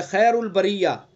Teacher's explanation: ہم خیر الخا حروف مستعلیہ میں سے پر پڑھیں گے. اور آگے جو یا ہے، یا لین ہے، یا لین کو معروف پڑھیں گے. اس کو خیر نہیں پڑھیں گے، خیر البریہ.